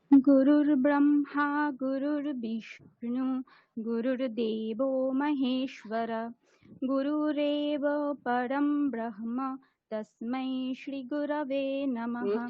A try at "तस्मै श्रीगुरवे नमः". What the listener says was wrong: এখানটা ভুল হলো, তস্मै শ্রী, হ্যাঁ তস্मै শ্রীটা দীর্ঘ, তস্मै শ্রী গুরবে নমঃ।